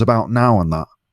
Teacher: So ow in words like about and now sounds more nasal when says it. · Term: Nasal sound